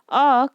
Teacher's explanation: तो अ जो है वो केंद्रीय स्वर होता है